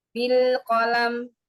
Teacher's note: Mim dan nun sukun izhar, yang izhar masuk ke tingkatan gunnah ketiga, naqisah.